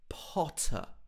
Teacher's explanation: potter he doesn't say harry potter he's harry potter and again he gets this very british o sound in the middle potter and then it has an uh at the end potter harry